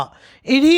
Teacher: ఇని అనేది తాలవ్య స్పర్శ అనునాసిక